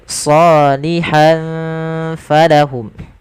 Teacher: ada tanwin pada lafal huruf ha yang bertemu dengan huruf fa, maka samarkan, maka ini kita hukumi dengan bacaan ikhfa dan samarkan tanwinnya ke huruf fa.